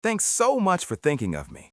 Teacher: The emphasis lands heavily on the word thinking.